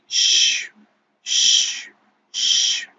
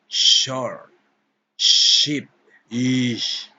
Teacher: Alveolo-palatal fricatives. These fricatives are made using the tongue and the alveolar ridge at the top of the mouth, further behind the teeth than the alveolar fricatives. Voiceless. Sh, sh, sh.